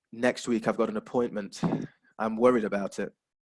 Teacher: So you have a falling intonation to show that you're worried about something.